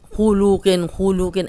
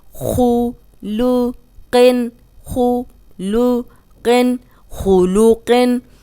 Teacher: خو موٹا ہے، قوف موٹا ہے، اور لام بیچ میں باریک ہے۔ اس لام کو ہم نے موٹا نہیں کرنا۔